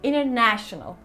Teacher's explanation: Biz international diye dümdüz söylerken aslında oradaki na'da bir çıkış var. İşte bu da İngilizcenin ritmi.